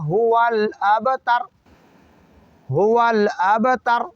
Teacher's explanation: دوسرا آخری 2 حرف تا اور را، اس میں تر ہے نہ کہ طور ہے، تا باریک پڑھنا ہے نہ کہ تو پڑھنا ہے